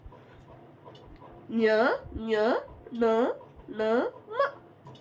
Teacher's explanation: ಅನುನಾಸಿಕ, ಮೂಗಿನಿಂದ ಉಚ್ಚರಿಸಲಾಗುವ ಅಕ್ಷರಗಳು. ಅವು ಅನುನಾಸಿಕ ಅಕ್ಷರಗಳು.